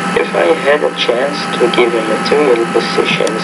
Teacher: You're starting off really, really low-key with really kind of monotone intonation. You almost sound sad, but maybe you're going to put some life into your voice here in just a minute.